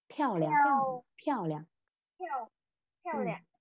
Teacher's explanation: cái thanh nhẹ này nó không có thanh điệu bên trên ấy, mình chỉ đọc một nửa thôi